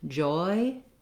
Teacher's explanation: So if you can say the word joy, joy, holding that vowel long and reducing, closing the mouth as you say it, losing the roundedness. So I start with rounded and I end up with an unrounded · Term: gliding diphthong